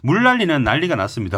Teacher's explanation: 리을 때문에 니은이 바로 리을로 바뀌게 되고요. 그다음에 뒤에 있는 리을 때문에 앞에 있는 니은이 바로 리을로 바뀌게 됩니다.